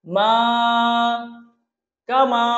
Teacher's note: কাতে কোনো টান নেই, মাতে আবার এক আলিফ টানতেছি কারণ জবরের পরে খালি আলিফ আসছে।